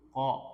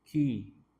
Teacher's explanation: lidah bagian dalam, paling bagian dalam, pangkal lidah, tapi dia ke depan sedikit. Ya, kalau qaf kan paling ujung, ko. Kalau kaf maju sedikit, ki, dan dia memiliki sifat hamas, ada udara mengalir.